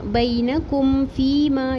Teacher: single حرکت ہے اور کم بینکم فیما، یہاں پر بھی میم ساکن پر رکیں گے نہیں، اظہار شفی کریں گے ، فیما یا مدہ، فی یا مدہ ایک الف برابر پڑھیں